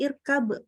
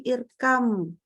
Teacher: Jadi bunyi ba-nya melebur sempurna ke huruf mim. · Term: idgham mutajanisain